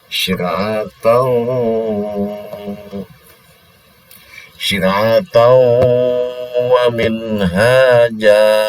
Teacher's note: Maka ini didengungkan, ya, dimasukkan suara tanwin ini kepada huruf waw, bigunah dengan dengung. Syir'atau, syir'atau, tau tapi didengungkan, ditekan sini dua ketukan. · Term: Idgham bigunah